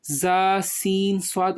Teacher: इनको हुफ सफीर ये भी कहते हैं सीटी सीटी की आवाज निकलेगी। इनको अदा करते वक्त नहीं निकल रही है तो आप का मखरज सही नहीं है।